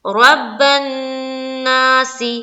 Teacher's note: رب الناس، نون مشدد کا غنہ کرتے ہوئے پڑھیں گے